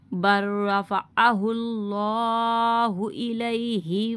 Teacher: اب یہاں پہ تشدید کے ساتھ را ہے اور لام کے ساتھ ساکین ہے، ٹھیک ہے، تو ساکین حروف کو ہم چھوڑ دیں گے، با کو را کے ساتھ ملائیں گے